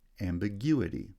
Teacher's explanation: is replaces the us ending it changes the placement of stress secondary stress remains on the first syllable but primary stress is shifted to the third syllable